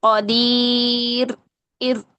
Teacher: مضبوط راس لسان جب مضبوطی سے ٹچ کر دیں گی نا تو تکرار ختم ہو جائے گی، جبکہ تکرار لازمی صفت ہے را کی